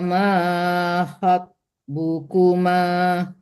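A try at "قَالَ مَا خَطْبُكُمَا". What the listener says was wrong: To, dipantulkan to-nya karena to-nya huruf qalqalah.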